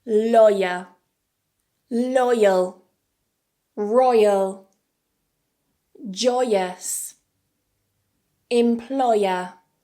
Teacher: this is a combination of /ɔɪ/ and /ə/ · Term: final triphthong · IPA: /ɔɪə/